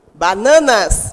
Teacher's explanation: Quando eu digo bananas, a sílaba mais forte que eu pronuncio é o na